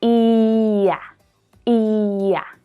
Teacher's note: the y sound is added between words that end in the long e and words that start with the short a